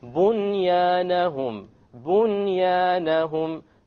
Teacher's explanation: There's a noon sakin followed by a ya. You do not merge anything here because it is in one word.